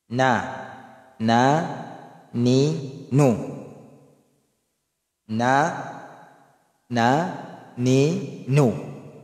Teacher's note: Ang makhraj ng nun mula sa harap ng dila kasama ang katapat nitong gilagid